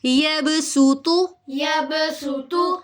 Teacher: مخرج تو ایک ہے دونوں کا، لیکن ان میں فرق کیا ہے، ڈفرنس کیا ہے کہ صاد موٹا پڑھا جاتا ہے اور سین باریک پڑھا جاتا ہے